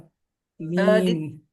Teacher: dua bibir bertemu tapi ditekannya ee ringan saja. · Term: mim